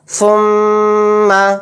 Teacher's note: میم کے اوپر تشدید آ گئی تو میم کے اندر بھی غنہ ہوگا، غنے کی مقدار ایک الف ہوگی